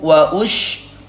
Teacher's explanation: Perhatikan ini huruf shin, makhrajnya dari wasthul lisan, tengah-tengah lidah.